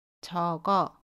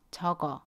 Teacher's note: 적어는 받침 기역과 모음 어가 만나요. 그러면 어떻게 발음하죠? 받침 기역이 모음 자리로 가서 적어 라고 발음합니다. 연음이에요. 그래서 적어 라고 발음합니다.